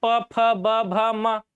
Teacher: ओष्ठव में ओठ मिल जाएगा, ओठ पास में आता है, प, फ, ब, भ, म, ओठ पास में आ रहा है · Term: ओष्ठव्य वर्ण